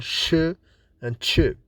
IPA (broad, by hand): ʃ, tʃ